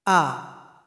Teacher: hamzah kalau kita kasih harokat menjadi huruf A gimana keluarnya yaitu keluar dari tenggorokan paling bawah jadi posisi mulut kita terbuka ketika dia berharokat fathah a kemudian aliran suara kita ketika membacanya itu alirannya tertahan a-a-a-a